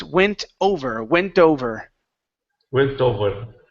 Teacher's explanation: let's remove the H sound okay so instead of went hover the word is went over